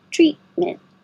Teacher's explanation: You don't say either of the T's at the end. Treat. Hold it there.